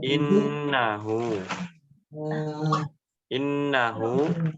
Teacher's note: Nun Yang bertasydidnya jangan terburu-buru ya jadi ditahan dulu diperhatikan ayat yang kedua [Musik] yang innahu innahu walaupun